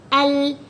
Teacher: Huruf lam makhraj dia keluar daripada hujung lidah menyentuh lelangit. Jadi kalau kita buat al, lidah kita akan menyentuh lelangit.